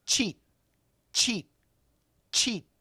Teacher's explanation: That stop sound is when we do the CH. Our tongue is touching, no air comes, and then boom, out comes the air. That is the CH.